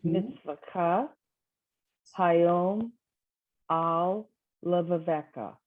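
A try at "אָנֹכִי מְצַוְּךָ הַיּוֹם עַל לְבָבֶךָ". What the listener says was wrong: Beautiful. Nice.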